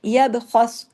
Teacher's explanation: लेकिन इसके अंदर जो खा है ये हैवी पढ़ा जाएगा।